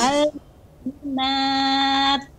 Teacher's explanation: Keluar S-nya ya Ustadz? Iya, ada sedikit desisnya karena sifat ta ketika sukun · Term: hamas